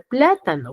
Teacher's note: las palabras esdrújulas van a tener la mayor fuerza de voz en la antepenúltima sílaba